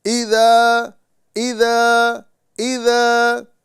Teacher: یہاں پر جو ہم ذال کو دراز کر رہے ہیں اس کے ساتھ میں الف مدہ ہے، لہذا اسے ایک الف کے برابر کھینچ کے پڑھیں گے